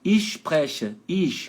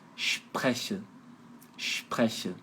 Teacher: S antes de P de pato e T de tatu é um chiado forte.